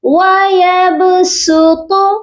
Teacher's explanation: پہلے نمبر پر تو با پر قلقلہ کریں گے اور تو کو موٹا کر کے پڑھیں گے۔ صاد کی ادائیگی نہیں ہوگی اس لیے یہاں پر موٹا نہیں ہوگا، سین پڑھیں گے۔